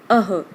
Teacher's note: अह यानी अ के बाद जो विसर्ग लगी है उसका ह के रूप में उच्चारण होता है।